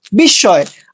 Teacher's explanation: শব্দের মাঝখানে মফলা থাকলে মফলার উচ্চারণ হয় না।